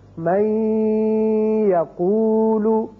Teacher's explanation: ادغام ہوگا اور نون کی آواز ٹھہرے گی ناک میں